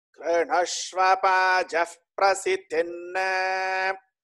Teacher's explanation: Normally people go wrong at the very beginning where there are 2 lower swaras.